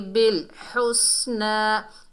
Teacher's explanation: बड़ी हा है, हलक के दरमियान से अदा होती है